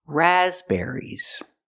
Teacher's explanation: syllable there's only one stress it's on the first syllable raspberries the second syllable is not ER it's air air like hair and chair